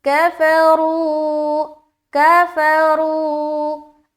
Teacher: واو مدہ کرتے ہوئے ہم را کو موٹا بھی رکھیں گے